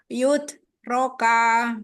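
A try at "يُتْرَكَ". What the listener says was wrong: Yut roka. Langsung. Yut roka. Ya, yut. Langsung cepet. Yut. Jangan diayun ya-nya.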